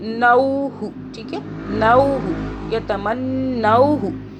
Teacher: واو ساکن ہو رہا ہے لین، یعنی کہ ہم اسے اکنالج کر رہے ہیں، کھینچ نہیں رہے، مدہ نہیں کر رہے